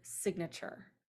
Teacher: in the base we have a long I we add a couple of things to it and now it becomes a short I in the word signature